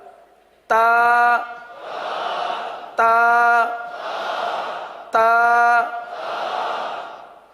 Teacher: یہ حروف نطعیہ ہیں، زبان کی نوک اور اوپر کے دانتوں کی جڑ سے ادا ہوتے ہیں